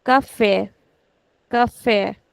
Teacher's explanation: So I am actually putting stretch on the last syllable which should never be the case.